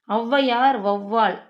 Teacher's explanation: அப்போ ஔனாலே நெடிலெழுத்து 2 மாத்திரை போட்டுருவீங்க. ஔவையார், வௌவால் என சொற்களில் முதலில் வரும்போது தனக்குரிய 2 மாத்திரை அளவிலிருந்து குறைந்து 1½ மாத்திரை அளவு ஒலிக்கிறது. இவ்வாறு குறைந்து ஒலிக்கும் எழுத்துக்கள் ஔகார குறுக்கம் எனப்படும்.